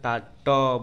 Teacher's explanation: ट बोलने में तालू का जो ऊपरी भाग होता है वह स्पर्श हो रहा है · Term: ट वर्ग